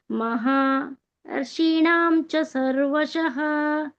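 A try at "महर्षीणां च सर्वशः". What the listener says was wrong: ಈ ಶಿ ದೀರ್ಘ ಇದೆ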